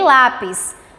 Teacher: Paroxítona porque ela tem a penúltima sílaba tônica, como em lápis, né? A sílaba tônica é lá, né?